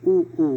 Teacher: और देखिए आप बोलेंगे ऊ ऊ, तो ऊ करने पर आपका क्या होता है, ये ओंठ जो आपके होते हैं बिल्कुल गोल आते हैं, ऊ ऊ इस तरीके से करते हैं आप, तो ये आपका हो जाएगा, ओंठ से बोलते हैं ना हम लोग ऊ ऊ, तो ये ओष्ठ आपका हो जाएगा, ठीक है।